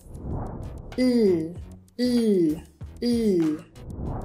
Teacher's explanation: my tongue is raised up towards the roof of my mouth and it blocks the airstream, which then finds its way out the mouth through the lateral of my mouth. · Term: L sound